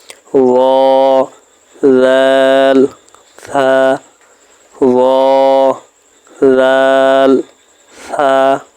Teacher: জিহ্বার আগা সামনের উপরের 2 দাঁতের আগার সঙ্গে লাগাইয়া